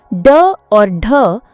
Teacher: इनका उच्चारण करते समय जीभ पहले ऊपर उठती है फिर तुरंत नीचे गिरती है। [संगीत] जिससे एक विशेष प्रकार की ध्वनि उत्पन्न होती है। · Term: उत्क्षिप्त व्यंजन